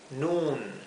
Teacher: para que sepan que se pronuncia como si fuera una U larga